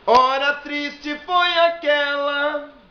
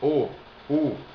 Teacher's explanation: Quando você vai fazer O e U, é fechado.